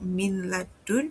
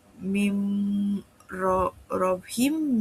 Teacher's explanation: the nun or the tanwin is merged into the following letter, but unlike idgham bighunnah, there is no nasal sound.